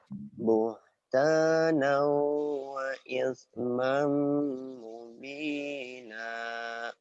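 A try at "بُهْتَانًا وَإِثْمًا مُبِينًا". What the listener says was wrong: buhtana wa ismam mubina. Ujungnya tuh kamu belum bisa main.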